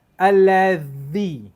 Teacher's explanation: Za, hujung sikit dia kena keluar. Allazi, zal, kena hujung lidah kena keluar.